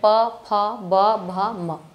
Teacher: प वर्ग, प, फ, ब, भ, म। ये ओठ से, बिना ओठ को सटाए इसको नहीं बोल सकते हैं